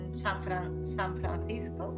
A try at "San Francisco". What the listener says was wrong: we don't say San Francisco like Spanish people. We say San Francisco.